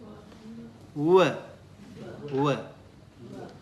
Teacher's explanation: Dantada, dental and labial, lips and teeth